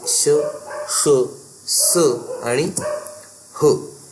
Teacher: ज्या वर्णांचा उच्चार करताना उच्चारणस्थान व जिभेचा पूर्ण स्पर्श न होता ते परस्परांपासून किंचित दूर राहतात त्या वर्णांना ऊष्म वर्ण असं म्हणतात.